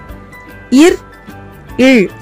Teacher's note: இர், இல் ஆகிய 2 மெய்களும் மேல்வாயை நாக்கின் நுனி வருடுவதால் பிறக்கின்றன